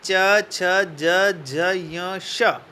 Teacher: तालव्य ध्वनियों का उच्चारण जीवा के अग्रभाग, अगले भाग के द्वारा कठोर तालु को स्पर्श करने से होता है। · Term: तालव्य व्यंजन